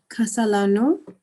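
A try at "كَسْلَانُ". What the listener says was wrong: Yeah, so there's a mistake here. It should be the scene itself should not be with a fatha. It should be with a sukun. Should be kaslano. No, the scene. The scene should be silent.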